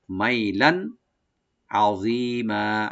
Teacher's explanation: মাই এখানে হরফে লিন, মিমটাকে open করে সফট করে পড়বো, লান, লামের উপর যে দুই জবর আছে এখানে আমরা এজাহার করবো, এখানে গুণা হবে না · আইনটাকে রাইট দিয়ে দটাকে একটু ডিপ করে আমরা এক আলিফ টানবো এখানে